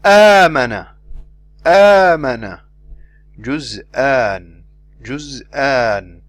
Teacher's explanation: The Hamza does not have elevation at the back part of the tongue.